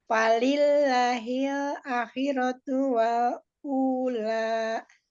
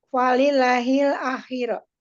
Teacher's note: Walillahi itu lafuz jam lam walillahunya itu dibaca tipis karena sebelumnya berharokat kasroh